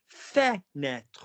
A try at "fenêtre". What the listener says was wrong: High, high, low. Now give me as a slide. Fenêtre. That's it. Vibrate more.